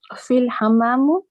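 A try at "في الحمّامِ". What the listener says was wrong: Fil hamami. Kasra.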